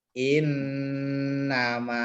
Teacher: Yang kita pegang setiap nun tasdid, mim tasdid dibaca dengung yang lama. Namanya bacaan gunnah.